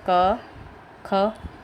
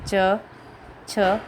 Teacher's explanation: अघोष जिसमें कंपन नहीं होती है